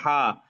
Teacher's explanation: >> হা যখন বলেন হা। হা বলার সময় মুখ থেকে বাতাস বের হবে। গলা থেকে বাতাস আসবে।